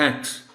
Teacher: thanks میں زبان آپ کی آگے کے دانتوں کے قریب چلی جاتی ہے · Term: TH کی آواز